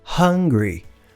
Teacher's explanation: começando com aquele H aspirado da garganta.